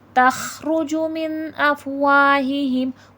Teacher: واو حرف شفوی ہے ہونٹوں سے ادا ہوگا